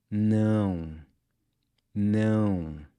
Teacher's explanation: add an “N-G” sound to the end—“now-ng”. Now, try keeping your mouth just barely open when you say it